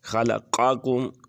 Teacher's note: یہاں پر قاف جو ہے گلے سے ادا ہوگی